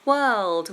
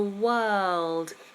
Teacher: The only difference is the dark L in world. So we have the same vowel, were, and then word or world to end.